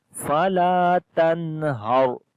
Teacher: Lam we long due to alif madda. After the noon sakin, the next letter is ha. So we make izhar here, the clear sound of noon.